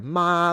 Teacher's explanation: first tone seems to be higher in pitch than what you normally hear in other varieties. So actually like a ma very high.